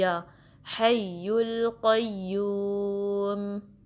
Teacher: یا درمیانے زبان کے حصے سے نکلتا ہے وسط اللسان سے